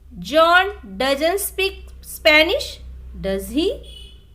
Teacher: If the intonation of the question tag goes down, it means you are checking or confirming information that we are sure of. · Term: Falling intonation